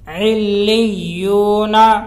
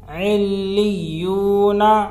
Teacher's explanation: علیون، عین لام سے عل، یہ لام کو بہت تشدید ہے، اس کو 2 مرتبہ پڑھیں گے، ایک پچھلے والے حرف سے ملا کر اور ایک خود سے، اور یہاں پہ 2 تشدید ہے، تو اس طرح پڑھیں گے اسی طرح۔